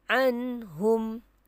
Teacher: Jadi bacaannya kena jelas. Jelaskan huruf nun mati dan juga huruf izhar tanpa ada dengung. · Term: izhar halqi